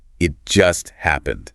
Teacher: emphasizing just to show it was very recent. It highlights the immediacy of the situation.